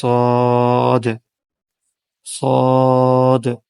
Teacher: تو دیکھیں حرف صاد میں زبان کی جو نوک ہے وہ ثنایا سفلا یعنی نیچے والے دو دانتوں کے ساتھ بالکل ملا ہوا ہے، اور اس کا کچھ حصہ اوپر والے دانتوں کے ساتھ ملا ہوا ہے، اور وہاں سے آواز نکل رہی ہے صاد صاد، یعنی زبان کی نوک کو ثنایا سفلا سے ملائیں گے اور اس کے ساتھ ساتھ کچھ ثنایا علیا سے بھی ملے گی، تو اس سے حرف صاد ادا ہوتا ہے۔